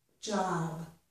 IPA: dʒ